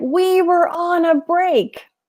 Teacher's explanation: he's not shouting it but he's emphasizing every single word